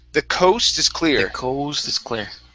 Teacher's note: Instead of coast with an ow, it's o. Okay, go to that o first, then to the oo.